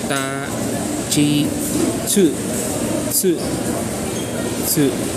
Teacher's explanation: For T, column T, that's we don't have a TI. We don't have a TI for the Japanese language, but rather the TI is converted into chi.